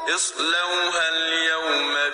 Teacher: یہاں پر واو سے پہلے زبر ہے تو واو لین ہوگا، نرمی سے پڑھیں گے